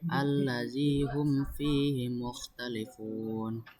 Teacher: Izhar syafawi sebab ada mim sukun bertemu dengan huruf fa. Cara membacanya itu jelas.